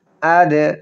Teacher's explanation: দালে কলকলা হবে, দালের উপরে সাকিন আছে